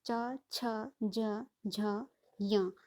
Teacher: जैसे च वर्ग को हम कह रहे हैं तालव्य, तो जो हम च, छ, ज, झ, य, तो जीभ हमारी जिस भाग को टच कर रही है वो हमारा तालु कहलाता है। ठीक है, तो इसलिए इनको तालव्य वर्ण कहा गया है।